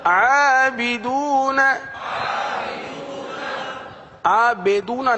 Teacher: با کے نیچے زیر ہے مجہول نہ کریں